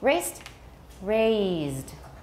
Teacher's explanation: raised voiced with a longer vowel raised raised so two big differences one is voiceless the other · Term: length mark